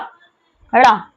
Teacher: उत्क्षिप्त जिनके उच्चारण में जीभ के ऊपर के भाग झटके से नीचे आए